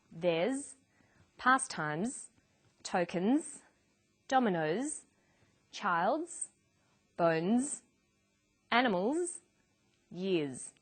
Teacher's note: after voiced consonants such as b, d, g, l, v, v, n, and after vowels and diphthongs, the final S is pronounced z